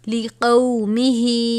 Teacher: مقدار، لِقَوْمِهِ، یہ کھڑی زیر ہے اور اوپر چھوٹی مد ہے، چھوٹی مد کو 3 الف کے برابر کھینچ کر پڑھتے ہیں